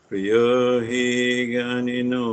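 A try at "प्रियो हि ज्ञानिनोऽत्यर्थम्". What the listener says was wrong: See that word there, the T on the last word, you put that on the end of the word before. So jnanino. So instead of saying jnanino, you say jnani not yartam.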